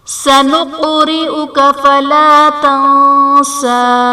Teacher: فلا تنسى میں نون ساکن کے بعد حروف اخفاء میں سے سین ہے تو یہاں پر اخفاء کا قاعدہ ہوگا، یعنی نون ساکن میں ہم غنہ کر کے پڑھیں گے · سنقرئک میں قاف حرف قلقلہ ساکن ہے تو یہاں پر قلقلہ خوب ظاہر کریں گے